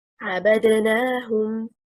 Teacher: The correct performance, stressed on حركة النون, indicates the pronoun hum is connected to another word